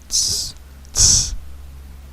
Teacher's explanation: a tzade, which is TS or TZ. It's not T, it's not S, it's both.